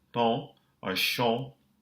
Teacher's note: that N is silent and you have a nasalized vowel.